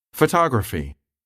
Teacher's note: In longer words, the stressed syllable can be the third to the last syllable, as in the word photography.